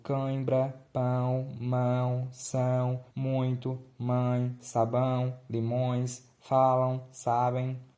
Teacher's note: E no ditongo nasal, durante a pronúncia, o ar passa pela boca e pelo nariz.